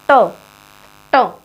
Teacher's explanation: मूर्धा, मूर्धा जैसे ट, ट हमारी जीभ लगती है ना अंदर मूर्धा की तरफ, यानी कि तालु से थोड़ा सा नीचे की तरफ